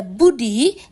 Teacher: Bunyi B pada Budi diucapkan dengan menutup kedua bibir lalu melepaskannya secara letup